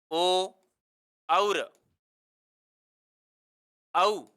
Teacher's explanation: अगला आता है ओ दौत्वः ओ दौत्वः कंठोष्ठम, कंठोष्ठम मतलब ये होगा ओ और औ, इनका उच्चारण कंठ और ओष्ठों के मिलने से होता है।